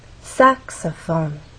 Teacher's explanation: in the case of saxophone there are also three syllables but the stressed syllable is the first one which means we have two more syllables to make our voice